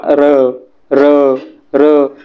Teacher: र या वर्णाचा उच्चार करताना कंपन होते.